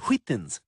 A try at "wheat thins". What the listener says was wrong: Why are you putting so much emphasis on the H? Say wheat. Now say wheat thins. Wheat thins. Wheat thins. Wheat thins.